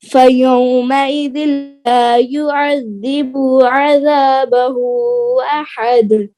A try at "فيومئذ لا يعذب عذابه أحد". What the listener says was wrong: युअज़्ज़िबु की बा की पेश को लंबा नहीं करना। फयौमइज़ ला युअज़्ज़िबु अज़ाबहु अहद।